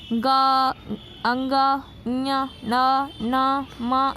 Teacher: ये सब नाक से बोले जाते हैं, इसलिए नासिका